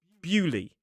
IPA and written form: ˈbjuːli (Beaulieu)